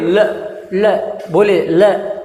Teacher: ल जैसे ही बोलेंगे तो हमारी जीभ कहां जाने की कोशिश करेगी हमारी जीभ पीछे की ओर जाने की कोशिश करेगी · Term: पार्श्विक व्यंजन